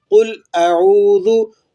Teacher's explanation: قوف کو آپ نے پر پڑھنا ہے اور لام کو ہلانا نہیں ہے